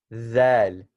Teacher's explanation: It's a Z sound with a lisp. So you're going to put it between your teeth. Zal. Just like the tha we said we put it between our teeth, same thing with this.